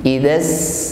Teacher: huruf sin yaitu sifat hamas, ada nafas yang mengalir. Idzas sama, berikutnya ma kita panjangkan 4 harokat atau 2 kali ayun.